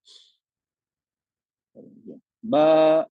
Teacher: अगर हमने बा कहा हमने, बा, वोकल कॉर्ड पूरी खुली हुई है, आवाज बाहर आ रही